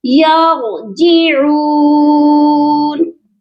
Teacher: را کو موٹا کر کے پڑھیں گے اور عین کی آواز درمیان والے حلق سے آئے گی اور اس عین کو بھی ایک الف کی مقدار لمبا کیا جائے گا.